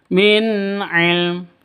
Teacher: Karena izhar halqi maka tidak boleh didengungkan, dipanjangkan.